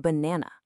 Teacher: Even in banana, the first and last uh are both schwas.